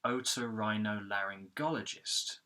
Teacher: we've got the primary stress of this word, which is on the go syllable